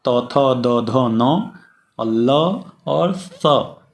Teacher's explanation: लृ वर्ण, तू का अर्थात त थ द ध न और ल और स, जिसे हम सड़क वाला स कहते हैं, वह दंत स है। दांत में जा करके जिह्वा स्पर्श करती है, इसलिए इन वर्णों का सही सही उच्चारण स्थान दंत है।